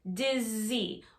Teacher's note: when you say the z sound you should feel some vibration here that's how you know you're saying it correctly the next